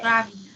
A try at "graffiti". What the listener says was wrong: It does sound like gravity, but gravity has a V sound, and this one has an I sound.